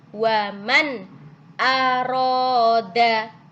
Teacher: idhar halqi izhar artinya jelas halq karena apa keluar dari tenggorokan huruf a tadi keluar dari tenggorokan